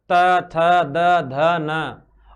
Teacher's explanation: बिल्कुल जीव है जो स्पष्ट रूप से अपने दांतों को स्पर्श कर रही है · जीव स्पर्श करेगी दांतों को और इन्ह बोलते हैं दंती वर्ण त वर्ग में कौन-कौन से त थ द ध न और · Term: दंत्य वर्ण